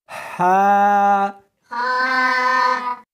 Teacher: ہا نہیں پڑھنی بلکہ اس کو حلق میں سے نکالنا ہے، سینے میں سے نہیں نکالنا · اس کو حلق میں سے نکالنا ہے اور ساتھ میں ہوا بھی ہونی چاہیے